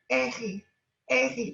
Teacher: Temos um pouco de gutural, a pronúncia, pero ustedes podem pronunciar como se fuera a J em espanhol